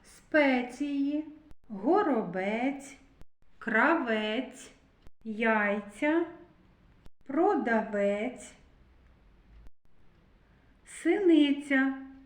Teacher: Ми чуємо звук ц, тобто м'який приголосний. І на звуковій схемі ми позначаємо двома рисочками.